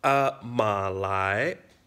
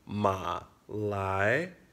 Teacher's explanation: the second tone is rising and it's a lot slower so you say it longer